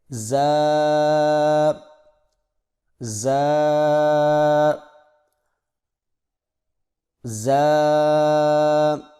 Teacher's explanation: زبان کی نوک کو سامنے والے نیچے کے 2 دانتوں کے کناروں سے مضبوطی سے لگا کر باریک اور سیٹی جیسی آواز میں پڑھیں، یعنی زا، میرے ساتھ پڑھیں، زا زا زا۔